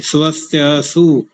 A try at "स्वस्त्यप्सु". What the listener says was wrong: नहीं, त्या नहीं करना, वो पा भी तो उसके साथ जोड़ना है। स्वस्त्यप त्यप